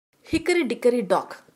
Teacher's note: each stressed syllable followed by two unstressed syllables